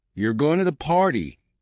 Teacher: the party with a flat tone it's just a statement but if you raise your voice at the end you're going to party it becomes a question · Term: intonation